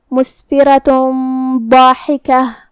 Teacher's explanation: اخفاء کا معنی ہے چھپا دینا، تو ہم یہ تنوین کو چھپاتے ہوئے لیکن غنہ کے ساتھ یہ حکم کو ادا کریں گے